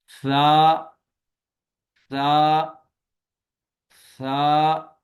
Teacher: زبان کی نوک ثنایا علیہ کے اندرونی کناروں پہ لگی ہوئی ہے، اور اس میں سیٹی کی آواز نہیں آئے گی،